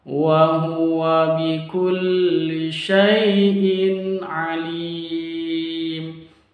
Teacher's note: Lim ini mad tabii diakhiri dengan huruf hidup dan terjadi pada kalimat terakhir atau waqaf maka disebut dengan mad arid lisukun. Mad arid lisukun panjangnya dua boleh empat boleh sampai enam.